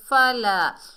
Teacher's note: فَأَمَّل اور میم کو لام سے ملائیں گے، جزم والا حرف ہے ہمیشہ 1 مرتبہ پڑھا جاتا ہے، اور یا ساکن سے پہلے زیر یا مدہ ہے، یتیمہ، تو ہم نے یا ساکن کو 1 الف کی مقدار کھینچ کر پڑھا، میم کے اوپر زبر بغیر کھینچے پڑھیں گے۔ فلا، الف خالی سے پہلے زبر ہے، یہ الف مدہ ہے، 1 الف کی مقدار کھینچ کر پڑھیں گے۔